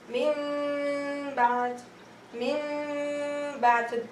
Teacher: We converted the noon into meme and did the ghunna slightly on the meme.